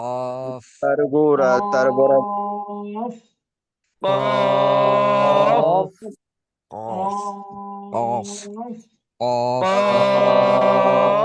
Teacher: জিহ্বার গোড়া তার বরাবর উপরে তালুর সঙ্গে লাগাইয়া দাঁড় কাকের মতো মোটা আওয়াজে